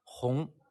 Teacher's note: There are 4 intonations, and in this case, it's the second tone, the rising tone